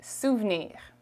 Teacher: we speak quickly so it's going to sound like souvnir okay the e after the v is not very emphasized